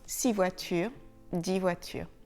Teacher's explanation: le X ne se prononce pas quand il est suivi d'une consonne.